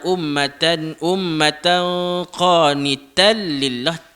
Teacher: Tal lillah tu terus masuk ke dalam huruf lam. Itulah idgham bila gunnah.